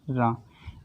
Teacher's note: अब प्राकंपित व्यंजन का मतलब क्या है कि जब इसको हम बोलते हैं तो जीभ जो होती है हमारी क्या करती है, कंपन करती है। रा 2-3 बार करके निकलती है तो ये कंपन करती है।